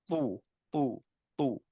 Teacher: খুব বেশি মুখটা গোল না অল্প মুখটা গোল রেখে মাখরাজটা ঠিক রেখে আমরা তু বলবো